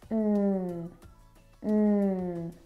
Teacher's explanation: the N sound is made back in the soft pallet. It's a nasal sound.